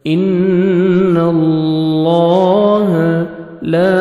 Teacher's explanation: لام کو اپنے پر بھی کرنا ہے، موٹا کرنا ہے اور 1 سیکنڈ کھینچیں گے، کھڑے زبر ہے۔